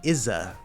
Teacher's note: you can actually assimilate the TH into the S, in this case it's the Z sound